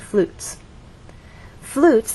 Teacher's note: flutes had one syllable so our voice glided down